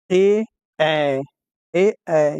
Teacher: कंठ तालुब्य, जिसमें कंठ और तालु दोनों का उपयोग किया जाता है, जैसे ए, ऐ, ए, ऐ, ये कंठ और तालुब्य दोनों में आता है।